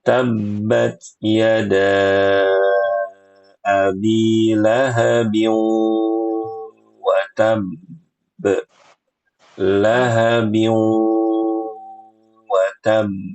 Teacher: Abi lahabin watab abin lahabin abin abi lahabin ketemu wau hukumnya idgham bighunah. Maka selain kita leburkan tanwinnya ke huruf wau, harus ada ghunahnya, harus ada dengungnya.